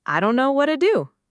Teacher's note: don't know blends into dunno and what to blends into whatta, both built around that same relaxed schwa quality.